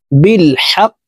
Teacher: হাক কফ জেরি বিল হাক কফকে ওয়াকফুর ক্ষেত্রে সাকিন করে ফেলবো কফ যেহেতু কলকলার হরফ উপরের দিকে ধাবিত করে ধাক্কা দিয়ে উচ্চারণ করে পড়তে হবে